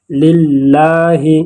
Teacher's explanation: کیونکہ لفظ اللہ کے لام سے پہلے زیر آیا ہے، اور جب لفظ اللہ کے لام سے پہلے زیر آ جائے تو وہاں پر ہم اس لفظ اللہ کے لام کو باریک پڑھیں گے للہ۔ اس کو پر نہیں پڑھیں گے، للہ پڑھیں گے، للہ